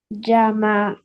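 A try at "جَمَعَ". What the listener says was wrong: Jama and Ain sound also. Yeah, add all letters sound together. Don't stretch.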